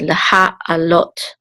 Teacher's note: And this is the accent, the main accent mark. It's on the last syllable. And this is the cholim with the tav at the end, which the cholim says o, so this is lot.